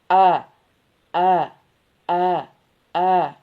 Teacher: Hamzah itu mahrajnya di pangkal tenggorokan ya. Atau boleh juga yang boleh juga dikatakan di atas tenggorokan ya.